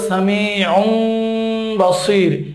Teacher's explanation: তানবিনের পরে বা আসছে, এখানে এই তানবিনের উচ্চারণটা মিম হয়ে যাবে। সামিউন আছে, বলতে হবে সামিউম বাসির, একটু গুন্না করে এখানে পড়তে হবে।